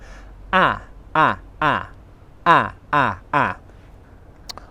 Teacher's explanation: The lips are unrounded for a. It's a short vowel sound. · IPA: /a/